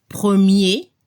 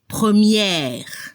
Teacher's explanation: Al masculino se escucha el sonido E al final, premier, y al femenino hay que abrir la boca para la pronunciación de la última E. Y se debe escuchar la última consona R, première.